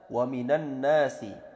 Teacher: Nun berharakat fathah langsung masuk ke tasydid tasydid yang mana nun-nya juga panjang